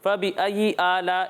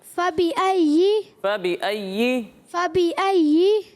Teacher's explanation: تو تشدید ظاہر ہونی چاہیے کہ آپ تشدید پڑھ رہے ہیں, ایسا نہیں لگنا چاہیے کہ آپ ایک ہی یا پڑھ رہے ہیں. فبأي آلاء اس طرح کی آواز نہیں آنی چاہیے. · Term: یا کی تشدید